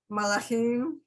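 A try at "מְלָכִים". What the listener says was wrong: Okay, so the third word from the end is milachim, like the I in it. Milachim.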